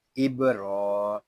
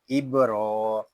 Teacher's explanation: रा को हम एक अलिफ तक खींच कर पढ़ेंगे और रा को पुर भी पढ़ेंगे क्योंकि रा के ऊपर खड़ा ज़बर है।